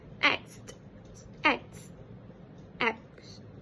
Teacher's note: So the elision occurred in the word acts, where the t sound was dropped, whereby it changes from acts to acts.